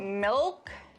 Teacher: when you produce the dark L the back of your tongue bunches so think about the word milk and pull the lighter L